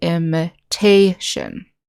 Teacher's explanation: So like in this word, imitation, the accent is on the syllable that starts with T.